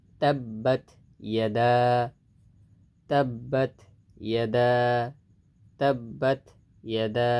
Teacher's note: খালি আলিফ, এখানে এক আলিফ টানতে হবে, মানে মাদ্দে তবাই। তাব্বাত ইয়াদা, তাব্বাত ইয়াদা, তাব্বাত ইয়াদা, এক আলিফ টান, ঠিক আছে।